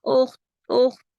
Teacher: اخفا ہوگا، تھوڑی آواز ناک میں جائے گی، تھوڑی باہر رہے گی۔